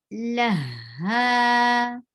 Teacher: For ha, give a rakhawa, flow of sound. La, ha. Ha, 2 counts long too.